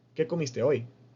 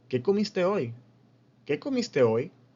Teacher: No lo decimos así de plano, ¿no? Tenemos una pequeña entonación al final para dar a entender que es una pregunta